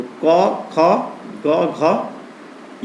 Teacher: क, ख, ग, घ ये कंठ से बोले जाते हैं, कंठ से।